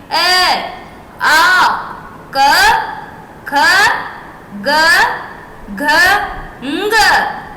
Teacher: ये कहलाते हैं कंठ वर्ण जो कंठ से बोले जाते हैं